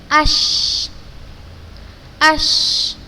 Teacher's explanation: Terasa kan udaranya tersebar pada seluruh mulut kita? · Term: sifat tafasyi